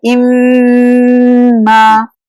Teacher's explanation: हर्फ अल गुन्ना यानी मीम मुशद्दद, दोनों होठ का सूखा हिस्सा टाइटली मिलाने से मीम अदा होता है। मीम मुशद्दद भी इसी तरह अदा होगा और नाक के बासे से इसकी आवाज निकलती है, जैसे इम्मा।